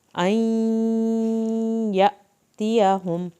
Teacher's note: या की शत पे देर लगानी है लेकिन सख्ती नहीं दिखानी, या की शत को नरम पढ़ना होता है